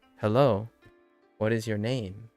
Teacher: with the emphasis on name